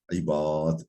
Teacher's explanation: Nahvu ibad aslında ibadidir ama dururken ibad diyorsun.